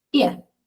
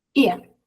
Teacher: la schwa, aunque esté en un diptongo, sigue siendo débil